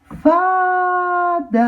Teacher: a sílaba tônica da palavra fadas é o fá